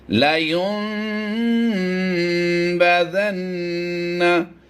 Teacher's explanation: नून की आवाज़ को हमने साइलेंट किया है और मीम की आवाज़ को वाज़े किया है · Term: इकलाब